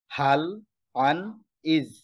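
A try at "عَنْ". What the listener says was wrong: হাল আন, আইনের উচ্চারণ স্পষ্ট করতে হবে। তো আউযুতে প্রথমে হামজা এরপরে আইন। তাহলে আউযু যেমন আন, আন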